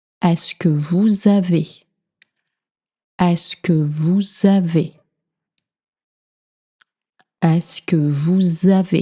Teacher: Est-ce que vous avez? You hear with the Z sound.